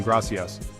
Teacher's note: C sounds like S before E or I, like in gracias. This is a soft sound, almost like a hiss.